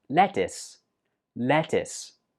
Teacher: Now, of course, the spelling looks like it should be pronounced lettuce. But actually, the last syllable is pronounced is.